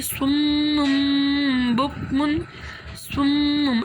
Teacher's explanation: بکم، صم، اب یہاں پر سمپل گنہ بھی ہو رہا ہے، میم کے اوپر شد ہے تو ہم یہاں پر بھی گنہ کریں گے